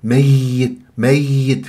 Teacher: بغنه وشوفوا كيف انه رسم تشد على ميم ميت والياء شدده لا بد انه انبر في الياء المشدده مع عدم ذهاب صوتها واختفاء صوت الياء ولا عدم الضغط كثيرا حتى لا يتشوه صوت